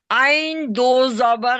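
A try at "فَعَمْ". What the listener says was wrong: नहीं नहीं, आइन के ऊपर छोटा मीम है ना, उसको भी शामिल करना है हिज्जे में। आइन मीम।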